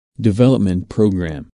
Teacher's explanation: Since these two words make a compound noun, the main stress falls on development.